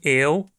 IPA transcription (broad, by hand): eʊ̯